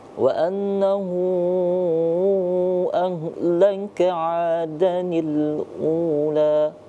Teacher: dibaca lebih panjang. Hu dari kata annahunya karena mad sila tawila